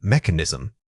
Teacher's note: The initial unstressed syllable is quick and soft, almost blending in. The main effort should go into articulating that clear KH sound.